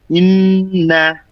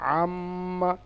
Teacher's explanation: নাকের মধ্যে আওয়াজ নিয়ে গিয়ে কিছুক্ষণ মানে প্রায় দুই সেকেন্ডের বরাবর আওয়াজকে ধরে রাখাকে বলা হয় গুন্না